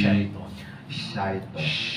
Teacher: Shin tu cepat akak gigi lidah ni agak naik ke langit. Ni atas lidah ni biar rapat ke langit. Bukan hujung lidah.